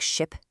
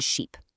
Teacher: For ship, that short I sound, your mouth is all relaxed. But for sheep, that long e sound, you've got to stretch your lips. Kind of like you're smiling.